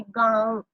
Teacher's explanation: नाक से भी आवाज आ रही है और मुंह से भी। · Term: अनुनासिक